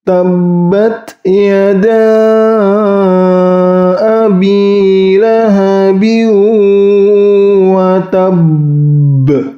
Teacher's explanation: terdapat ba tasdid, yaitu qalqalah akbar, ditahan kemudian dipantulkan